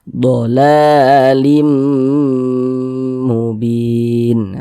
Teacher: bin dibaca panjang. Ini namanya mad arid li sukun.